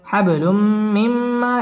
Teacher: পড়তে হবে হাব বা কলকলার হরফ ধাক্কা দিয়ে পড়তে হবে হাবলুম তানবিনের বামে মিম আসছে মিম ইদগামে বা গুন্নার হরফ গুন্না সহ মিলিয়ে পড়তে হবে